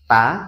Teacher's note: Cara membaca Murdanya ini dimana lidah itu diangkat ke atas hingga menyentuh langit-langit ya, ujung lidah, hanya ujung lidah ya teman-teman